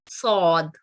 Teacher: جبکہ صاد, یہ موٹا, اس کی آواز جو ہے موٹی ہوگی کیونکہ یہ حروف تفخیم ہے, اور منہ کو گول رکھتے ہوئے زبان کی نوک کو اگر ہم نچلے والے دانت کے ساتھ جوڑ کر ادا کریں تو اس کی آواز موٹی ادا ہوگی